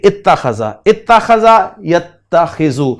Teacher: ادغام کر دیا گیا، الحمزۃ فی التاء، حمزہ کو تا میں ادغام کر دیا گیا